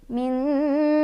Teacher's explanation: Dibacanya nun sukunnya samar-samar sambil berdengung. Samarnya lebih banyak, dengungnya lebih sedikit. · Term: ikhfa aqrab